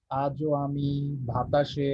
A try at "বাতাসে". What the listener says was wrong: যে বাতাসে, এটা ভাতাসে না, বাতাসে, ব, অল্প প্রাণ, বাতাসে।